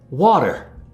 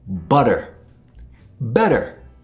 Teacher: The American English T sound is sometimes pronounced like D. This is called a flap T.